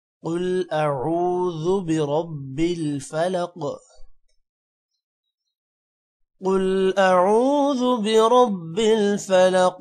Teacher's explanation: قل کا قاف موٹا ہوگا، اعوذ اعوذ برب را موٹا ہوگا، اور فلق میں قاف موٹا ہوگا اور قاف پر قلقلہ بھی ہوگا